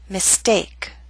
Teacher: with the ST we do not have the strong puff of air